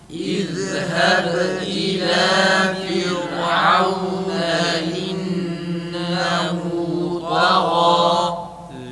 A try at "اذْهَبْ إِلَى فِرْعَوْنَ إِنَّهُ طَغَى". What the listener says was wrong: Nunda acele etmenin müşeddesine bir de Firavune ra ince kalın değil. Tekrar ra'ya dikkat edelim arkadaşlar.